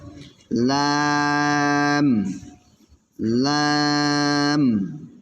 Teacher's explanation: জিহ্বার আগার কিনারা সামনের উপরের দাঁতের মাড়ির সঙ্গে লাগাইয়া